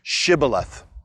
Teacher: shibboleth is pronounced with an sh but the people of ephraim have an accent and they can't make the sh sound so they end up saying sybileth and when they do they